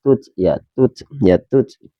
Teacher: Cara membaca huruf ta, teman-teman, ta itu kan termasuk huruf hams. Jadi membacanya itu harus mengeluarkan angin ya.